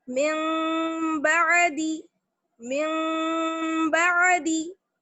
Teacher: نون ساکن کی آواز کو میم سے بدل کر غنہ اور اخفا کے ساتھ پڑھیں گے. کس طرح، من بعدی، ایک الف کے برابر ٹھہر جائیں گے، من بعدی من بعدی. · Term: اقلاب